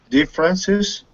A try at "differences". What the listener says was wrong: First syllable. Differences. Yeah, but you're putting the stress. You're putting the stress on the third syllable. You're saying differences. It's not differences. First syllable. La sílaba tónica. Primera sílaba. Differences.